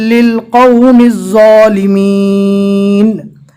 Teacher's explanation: ज़ो को अदा करते वक्त हल्की सी सीटी जैसी आवाज़ निकलेगी